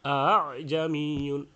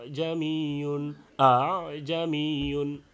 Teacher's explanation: জায়গায় দ্বিতীয় হামজাকে তাসহিল করে পড়তে হবে তো তাসহিল কি যে প্রথম হামজা শক্ত হবে দ্বিতীয় হামজা হালকা একটু সহজ করে নরম করে উচ্চারণ করা